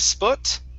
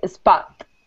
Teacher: Instead of sput, it's spa, spot, with an ah